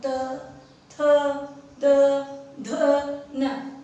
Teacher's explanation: त, थ, द, ध, न, तो दांतों से इनका उच्चारण हो रहा है